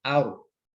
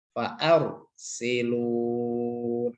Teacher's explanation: Bukan ar. Rok sukun jatuh setelah fathah tebal.